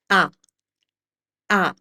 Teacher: In Italian, the A sound is an open sound and it's pronounced like this, A. Ah, so you open up your mouth very well. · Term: Italian A sound